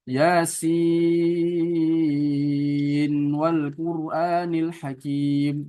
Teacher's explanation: Jadi bacanya ketika diwasal bukan diidghamkan tapi diizharkan. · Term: izhar riwayah